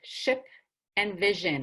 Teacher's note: then we have ship and vision or SH and Z H they use the middle of the tongue in the middle of the top of the mouth